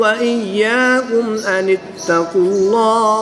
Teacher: اس میں جلالت اللہ عز و جل کے لام سے پہلے حرف پر پیش ہے تو ہم اس میں جلالت اللہ عز و جل کے لام کو پر یعنی موٹا پڑھیں گے